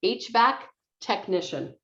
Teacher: technician uh stresses on this second syllable